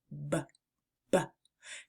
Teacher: The B sound is a voiced lip popper. It's like a soft pop when your lips come together. B, B. To make the B sound, start by pressing your lips together firmly and then releasing a puff of air while turning on your voice. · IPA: /b/